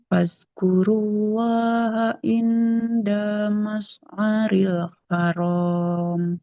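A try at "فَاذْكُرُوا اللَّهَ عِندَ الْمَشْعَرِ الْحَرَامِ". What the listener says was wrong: Jangan jangan fas. Nanti jadi sa ya, huruf za. Fazkurullah.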